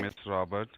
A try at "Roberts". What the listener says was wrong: Roberts. It's Roberts with an S. Roberts with an S.